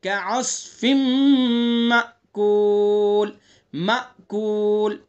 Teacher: صاد کو پر پڑھیں گے